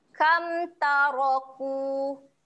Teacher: Kam, jelaskan saja bunyi mim mati tu. Jangan dengung kat sini eh.